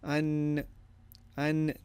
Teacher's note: so you basically have a sound of the noon of two seconds